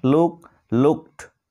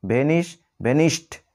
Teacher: এই ওয়ার্ডগুলি শেষে যথাক্রমে ক, প, ফ, স সাউন্ড থাকায় ইডি যোগ হওয়ার পর আমরা ইডি এর সাউন্ড পাচ্ছি টর মতো